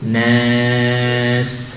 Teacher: Dan sin sukun atau sin waqaf itu ya, sin yang diwaqaf dirokhwahkan dan di sofir, desis. Nas, jangan buru-buru, jangan nas.